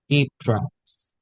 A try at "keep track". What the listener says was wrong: One more time, keep track. No S bash. Keep track.